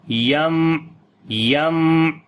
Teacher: On the meme we make tawassut quality. We continue little bit the meme sound, and also similarly we discontinue little bit like the moderation sound.